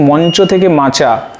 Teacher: নাসিক্য ব্যঞ্জনটি লোপ হয়ে গেছে এবং তার পূর্বে যে ধ্বনিটি সেই ধ্বনিটিতে অনুনাসিক একটি অনুরণন সৃষ্টি হয়েছে। অর্থাৎ একটি ছন্দবিন্দু এসেছে। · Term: নাসিকী ভবন